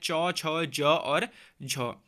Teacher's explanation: स्पर्श संघर्षी व्यंजन में वैसे तो चार आपने ध्यान में रखने हैं च छ ज और झ